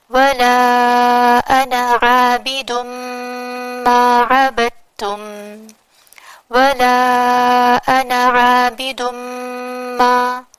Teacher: میں نے کنٹینیویشن میں نون پر صرف فتح پڑھا، نون کو صرف 1 کاؤنٹ کرتے ہوئے، اس الف کو کنٹینیویشن میں نے نہیں پڑھا۔